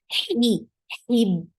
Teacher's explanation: For ha, you have to create that misty sound before kasra. Hib. And ba will be sharp.